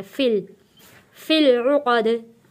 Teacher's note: लाम को आपने क्योंकि लाम के ऊपर जज़म है, लाम साकिन है, लाम फ़िल, लाम के ऊपर ही आपने अपनी ज़बान को रोक देना है।